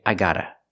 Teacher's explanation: in America, it's more common not to pronounce the v sound in I've and just say, I gotta